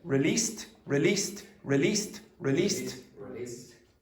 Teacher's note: It's almost a Chinese pronunciation. We go down and up. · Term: intonation